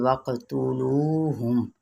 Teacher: واو کو ہونٹوں کی ناتمام گولائی کے ساتھ ادا کریں گے، قاف پہ قلقلہ کرتے ہوئے